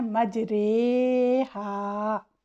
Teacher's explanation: امالہ کا مطلب ہے مائل کرنا، اس میں الف کو یا کی طرف اور فتحہ کو کسرہ کی طرف مائل کرتے ہیں، یعنی الف کی آواز کو یا کی طرف لے جاتے ہیں اور فتحہ کی آواز کو کسرہ کی طرف لے جاتے ہیں، اور اس کو مجہول طریقے سے جیسے کہ تیرے اور میرے کے وزن پر پڑھتے ہیں۔ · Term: رائے امالہ